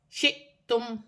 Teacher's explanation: حمزہ پر جزم کی حرکت ہے، جھٹکے کے ساتھ پڑھا جائے گا